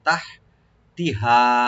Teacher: তাটাকে open করে হাটাকে আমরা একটু হামস করব